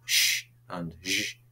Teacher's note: Those are alveolar fricatives. We have sh and zh, which are post-alveolar fricatives.